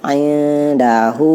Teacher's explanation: Nah, hu-nya itu ada tanda kayak bendera yang menandakan dia cara dibacanya 4 atau 5 harokat. Jadi indahu, hu-nya yang 5 harokat atau 4. Kalau 2 dia berarti dia salah cara bacanya, karena perintahnya wajib.